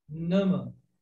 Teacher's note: Esse a aqui comum, como o nosso, ele não é igual ao nosso, ele é mais fechado e mais breve.